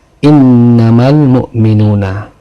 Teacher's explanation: Ini ada alif lam bertemu dengan huruf mim, maka ini disebut alif lam qamariyah. Alif lam yang dibaca jelas karena menghadapi huruf qamariyah, yaitu mim.